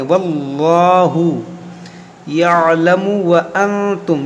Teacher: یہ اللہ کے لام کو ہم موٹا کریں گے